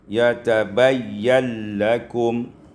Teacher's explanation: diidghamkan nun pada lam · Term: idghamun nun fil lam